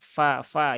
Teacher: fa dia huruf tipis ya di gigi seri atas bertemu bibir bawah bagian dalam